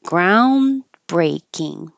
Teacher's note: you don't need to release the D and have a ground. Just hold it in the in position.